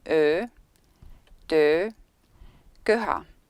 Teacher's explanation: To pronounce this vowel, your tongue is positioned forward and halfway between a close and a mid-vowel at the same height as, for example, for vowels O and E. The sides of your tongue touch your teeth and the tip of your tongue touches your lower teeth. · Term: Estonian Ö